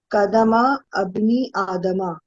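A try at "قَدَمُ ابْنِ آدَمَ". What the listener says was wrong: ہاں اس کو پڑھتے قدمبنی. یہ والا حمزہ حمزۃ الوصل ہے تو نہیں پڑھتے. قدمبنی آدم. آدمہ یہاں تک پڑھیں گی آپ، کیونکہ ظاہر ہے ہم لوگ تو گرامر کر رہے ہیں تو ساکن نہیں کریں گے.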